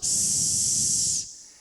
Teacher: as cordas vocais estão separadas não estão vibrando Então são sons surdos